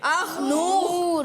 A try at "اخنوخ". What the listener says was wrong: اخنور, اخنور نہیں, اخنوخ.